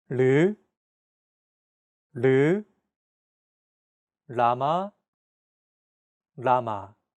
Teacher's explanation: this sound is actually somewhere between an l and an R sound when pronouncing this sound your tongue should strike the gum Ridge